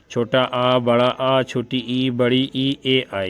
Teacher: वे स्वर जिनके उच्चारण करते समय ओष्ठ का आकार गोल न होकर ऊपर नीचे फैल जाता है वे कहलाते हैं आवृत्तमुखी स्वर।